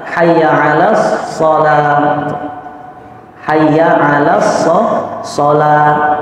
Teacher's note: Shotnya pendek, lamnya dipanjang.